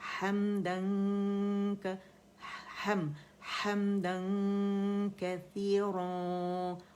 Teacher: غنہ کرتے ہوئے تھوڑی آواز منہ سے زیادہ ناک سے نکلے گی. ہر دفعہ اخفا میں ایسا ہوگا، ٹھیک ہے.